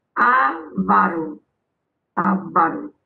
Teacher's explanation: A sílaba forte é avá. Essa palavra pretinha, você vai passar um traço de, no vá.